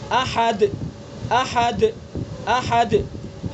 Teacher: دال کو جب ہم ادا کریں گے تو آواز ایسی سختی کے ساتھ ٹھہر رہی ہے کہ آواز ہی بند ہو گئی، اور آواز میں ایک قسم کی سختی پیدا ہو رہی ہے. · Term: شدیدہ